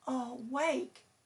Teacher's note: The word awake has stress on the second syllable.